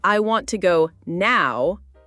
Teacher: Like in the sentence, I want to go now, the stress is on now.